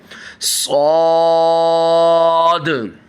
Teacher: سب سے پہلے دیکھیے گا اس کو موٹا بھی کرنا ہے، اس میں سیٹی بھی نکالنی ہے، اور اینڈ میں دیکھیں نیچے کی طرف جو یہاں پہ دیکھیں قلقلہ ہے، قلقلہ بھی واضح کرنا ہے، صاد۔